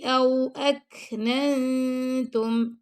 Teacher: کاف پہ ہم نے ہمز کیا اور ننتم پہ ہم نے اخفا کیا ہے